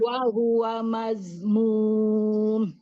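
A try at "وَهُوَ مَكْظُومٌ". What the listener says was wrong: Huruf K, bukan mazmum. Makzum.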